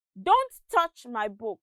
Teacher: the stress falls on don't touch and book